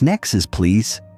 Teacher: Elision. Dropping sounds. Next please often becomes nexus please.